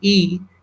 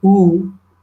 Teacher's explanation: The third component, which is very important, is also it talks about the plus minus round orifice. Whether if you say E, you can see that lip movement is spread. But if you say oo, the movement of the oo is rounded.